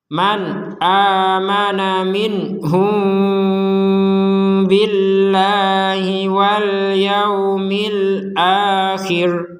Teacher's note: mim sukun bertemu ba, maka kita membacanya dengan samar disertai dengungan sedikit